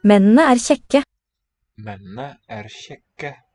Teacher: It's not a retroflex sh. I would say it's a sh.